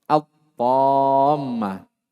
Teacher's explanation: wajib dimasukkan ya lamnya ke huruf ta dalam artian lam tidak terbaca lagi. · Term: idghamuha